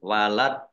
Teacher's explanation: panjang dua harkat sama dengan mad thii nah ini karena waqaf dalnya dibaca Sukun dan qolqolah atau memantul · ini karena wakof, dalnya dibaca sukun dan kolkolah atau memantul, dibaca memantul, walad, ya ditampakkan pantulannya, kolkolah sugro.